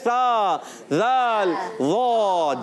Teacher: इन लिसविया को अदा करेंगे ज़बान के सिरे से और ऊपर के दांतों के किनारे से